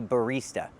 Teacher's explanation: We use the long e sound like green beans. We don't use the short i sound like this is.